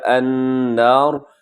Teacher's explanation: نون مشدد ہے تو یہاں غنہ کیجیے گا